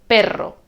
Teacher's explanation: tenemos en primer lugar un sonido r fuerte que aparece en español siempre que hay una r doble